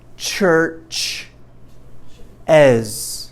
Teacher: And it's always as. It's never s. It's always z, always, always. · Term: Z sound